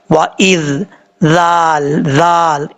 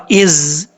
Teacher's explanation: ज़ाल का मखरज है, ज़ुबान का सिरा ऊपर वाले दांतों के अंदरूनी किनारे से लगे तो ज़ाल पढ़ा जाता है।